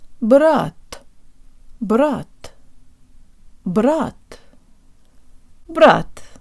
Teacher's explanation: There should be no buzzing or aspiration. It's not brat with the tip of the tongue, but jo tank lips.